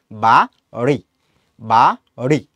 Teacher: জিভটাকে একটু হচ্ছে উপরের যে দাঁতের গোড়া আছে ওইখানে একটু টাচ করবা, টাচ করার পরে এটাকে ছেড়ে দিবা, ছেড়ে দেওয়ার সাথে সাথে যখন তুমি রয়ের উচ্চারণ করবা তখন যেইটা হয়, তখন সেটা হচ্ছে ডয়বিন্দু র।